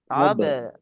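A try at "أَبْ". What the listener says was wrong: হ্যাঁ, আব বলে ধরে রাখলে হবে না, সঙ্গে সঙ্গে ছেড়ে দিতে হবে, আব।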